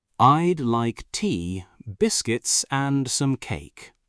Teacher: Tea goes up, biscuits goes up, cake goes down. · And in a list, your voice rises on each item except the last one.